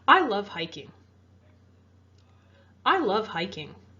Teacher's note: You can hear how my voice falls or goes down at the end of that statement. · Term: falling intonation